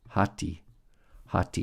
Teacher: Notice it's a rough breathing and the accent on the first syllable.